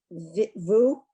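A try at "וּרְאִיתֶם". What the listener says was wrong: Okay, that's never, ever, ever, ever, ever, never vu. It is always oo.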